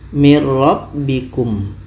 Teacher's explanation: Nun ini sempurna masuk ke ra. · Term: idgham kamil